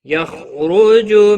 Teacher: خا ساکن کو ہلانا نہیں، خا حروف مستعلیہ میں سے پور پڑا جائے گا